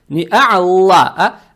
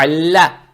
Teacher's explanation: Далее стоит буква лям с фатхой. Фатха приобретает оттенок Я. То есть а'ля. Не а'алла, а а'ля.